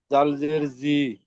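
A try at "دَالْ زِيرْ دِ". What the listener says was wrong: দাল জের দি, অক্ষর চিনতে ভুল হচ্ছে।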